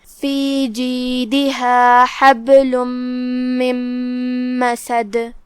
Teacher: ہم دال کو ہلاتے ہوئے یہ کلمہ کو ادا کریں گے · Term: قلقلہ